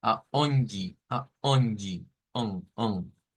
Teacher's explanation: Hay una vocal nasal en esa O. Hay una nasalización en esa O que nos hace sonar como la N. Por eso es que cuando vamos a la transliteración, pareciera como que es una N, vea, a ongi.